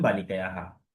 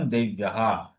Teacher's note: বিসর্গ থাকার কারণে বালিকায়া হা হয়ে গেল